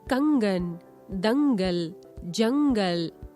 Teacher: अनुस्वार। इनका उच्चारण नाक से होता है